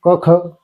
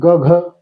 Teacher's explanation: स्पर्श व्यंजने त्याच्यामध्ये कठोर मृदू आणि अनुनासिक असतात पहिले दोन क ख हे कठोर राहतात